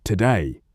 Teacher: The most common feet are I am, troy, anipest, and dactyl. An I am is two syllables with the stress on the second. Example today.